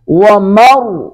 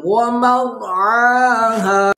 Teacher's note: را کو پر کریں گے، عین ادا کریں گے